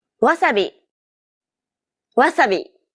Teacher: English The Sounds may be the same but don't forget that Japanese isn't a stress-timed language like English so instead of stressing the second syllable like Wasabi make it even throughout